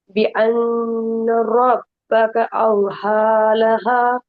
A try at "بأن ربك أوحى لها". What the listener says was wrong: ஹா அல்ல, அத கொஞ்சம் அவு ஹா, இந்த ஹாவை நீட்டீங்களே, அந்த ஹாவுக்கு அந்த ஹார்ட் அளவுக்கு இந்த ஹாவை நீட்டணும். بأن ربك أوحى لها. அப்ப அந்த பேலன்ஸ் ஆகணும். இது ஓதல் ஒன்றுல நீட்டி ஒன்றில் நீட்டாம வர்றது பில.